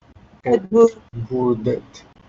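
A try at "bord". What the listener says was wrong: Claro, T no, sino que la final, la letra final tiene que sonar como la fonética del D. Y la fonética del D es D, ¿no? D. Board. Y a veces incluso ni siquiera pronuncian la R, sino que Edburt.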